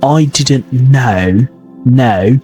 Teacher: So there's a round shape, a diphthong, an O sound, so the round shape.